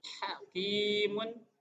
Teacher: Hakimun itu haknya hak tipis dan ada di tenggorokan sebelah tengah.